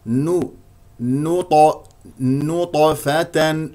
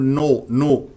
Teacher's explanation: نون مستفه مرققه جاء بعدها طاء مقلقله قلقله صغرى لانها ساكنه